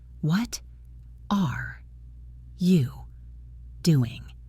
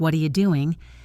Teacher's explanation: The T in what changes to a soft D sound and connects to the A in R.